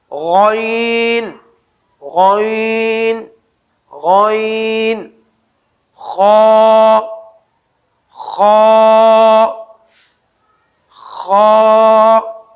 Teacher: ابتدائے حلق سے، حلق کے اوپر والے پہلے حصے سے غین اور خا